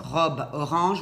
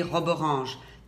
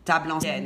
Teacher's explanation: quand vous dites « robe orange », vous enlevez le « e » et vous collez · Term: ruban sonore